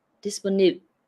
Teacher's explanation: you still say this last syllable, but you don't say the E, so it's kind of short for disponible.